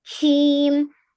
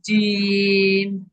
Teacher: huruf jim lebih ke tengah lagi. Jangan syim.